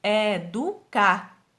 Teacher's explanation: Em educar com a sílaba tônica, car, quer dizer que ela é oxítona, porque a sílaba tônica é a última.